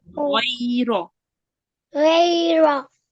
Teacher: when Ra has a fatha, you make it sound a bit thick. So you round your mouth. So it's Ghoira.